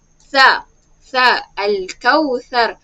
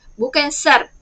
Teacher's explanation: Huruf sa bacanya keluar lidah sikit ya.